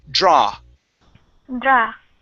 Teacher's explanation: we do not want to end with an ooh sound